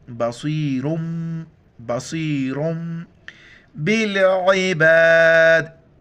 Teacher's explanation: سبق میں دو زبر آیا تھا یہاں پر دو پیش ہے تنوین کے بعد با آ جائے تو میم میں اس کو ملانا ہے اور ناک میں آواز پیدا کرنی ہے